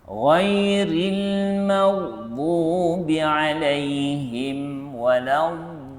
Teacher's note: pastikan nombor satu kita gunakan tepi lidah kiri ataupun kanan ataupun kedua-dua sekali